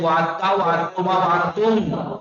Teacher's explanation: پہلا ساکن ہے دوسرا متحرک بھی ہے اس دال کو تے میں بدل دیتے ہیں